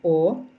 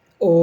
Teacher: вимовляємо низьким голосом о високим і о